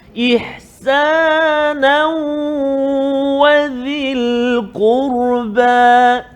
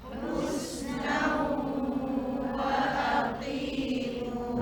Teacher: Maksudnya kita kalau macam ihsanan wadhi tu masukkan bunyi tanwin tu ke dalam huruf waw kan, berserta dengan dengung 2 harakat